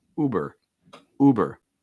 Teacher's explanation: Notice that my lips are small and round for the oo